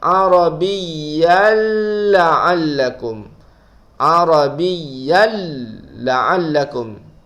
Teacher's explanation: Tanwin bertemu dengan lam, hukumnya idgham bila gunnah. Bacaannya ialah tidak boleh dengung dan kita masukkan tanwin ke dalam huruf lam. Arabiyyal terus masuk ke dalam huruf lam.